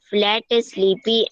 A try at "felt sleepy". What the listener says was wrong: not flat, but it's felt sleepy. It is felt sleepy, not flat sleepy. Felt sleepy.